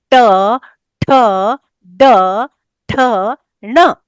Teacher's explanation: तो उनका स्तन क्योंकि मूर्धा है तो हमारी जीभ केवल स्पर्श नहीं करती वो और भी एक्सरसाइज करती है। वो उठती है। वो मुड़ती है। वो ऊपर जाती है और जीभ का जो ऊपर का मतलब टिप है उसकी वो जाके हमारी मूर्धा को स्पर्श करती है। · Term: मूर्धन्य